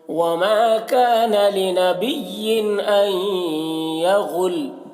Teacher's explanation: तनवीन के बाद हमज़ा है तो यहाँ पर इजहार होगा, तनवीन को जल्द पढ़ेंगे